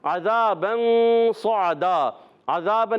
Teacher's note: عذاباً میں عین کی ادائیگی حلق کے درمیان والے حصے سے